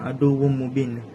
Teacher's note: Pada perkataan aduum mubin terdapat tanwin tanwin bertemu dengan huruf mim. Cara bacaannya didengungkan. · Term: idgham bighunah, idgham bi gunnah